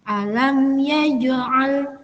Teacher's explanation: Kemudian di situ ada jim yang disukun. Maka bacaannya adalah harus dipantulkan jimnya karena jim termasuk huruf qalqalah. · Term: qalqalah sughra